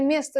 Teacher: Prosta o vurğusuz olduğu üçün biz orda a deyirik.